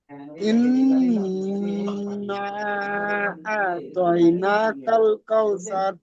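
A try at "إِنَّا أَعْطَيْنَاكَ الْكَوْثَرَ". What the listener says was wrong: নাতে আর একটু টান দেন ভাই ইন্না আতাইনা তাইনা কাল কাউসার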